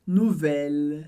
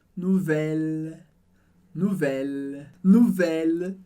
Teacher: Percebeu que o L termina bem alto no céu da boca, diferente do que a gente faz no português